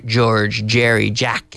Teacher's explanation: It's like a CH. You take the vocal cords, you activate the vocal cords with the CH sound. · The J and the G have that sound, the vocalized CH